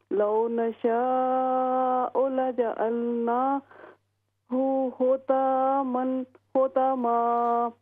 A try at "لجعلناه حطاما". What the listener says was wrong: ہاں جی یہ طا ہیوی ہوگی. لجعلناہ